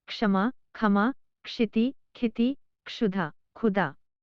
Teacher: बांग्ला में क्ष का उच्चारण ख होता है यदि यह पद के आरंभ में हो।